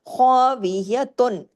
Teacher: خو کو ہیوی بھی اور دو حرکات کھینچنا بھی ہے